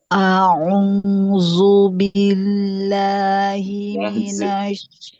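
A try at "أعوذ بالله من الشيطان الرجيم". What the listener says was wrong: Itu ujung lidahnya belum keluar. Mesti zu, jangan z. Zu tapi zu. Zu.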